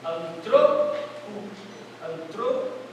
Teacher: Em vez da pessoa dar ênfase no an, ele vai dar a ênfase no tro.